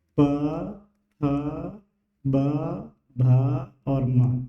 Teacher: इन सब वर्णों को जब हम बोलते हैं तो हमारे दोनों होंठ मिलते हैं, है ना। बिना होंठ मिलाए इनका उच्चारण नहीं कर सकते, अगर करेंगे तो भी गड़बड़ होगा, ठीक। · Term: ओष्ठ, प वर्ग